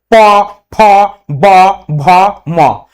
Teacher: আমরা দুটো ঠোট একত্র না করে কিন্তু এই বর্ণগুলো উচ্চারণ করতে পারবো না · যেহেতু এই বর্ণগুলো উচ্চারণ করতে গেলে দুটো ঠোট প্রয়োজন হচ্ছে অধর অষ্ঠের স্পর্শ লাগছে তাই এগুলো অষ্ঠ বর্ণ